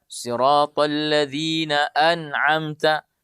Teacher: Kenapa nunnya di situ tidak boleh kita dengungkan? Karena nun sukunnya bertemu dengan huruf ain. Ain ini huruf tenggorokan. Maka an'amta, jangan baca an'amta. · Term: izhar